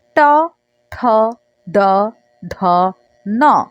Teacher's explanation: আমরা যেটাকে টাগরা বলে থাকি সেটাকে আমরা মূর্ধা বলছি এখানে। তো যেই টাগরার উপরে জিভের আগাটা উল্টো অবস্থায় গিয়ে ধাক্কা দিয়ে দিয়ে উচ্চারণ করে। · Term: মূর্ধা ধ্বনি